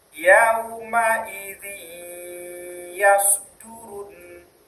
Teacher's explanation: Idgham yaitu suara nun menjadi hilang dan masuk ke huruf sesudahnya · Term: idgham bighunah